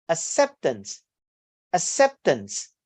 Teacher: your primary stress on the second syllable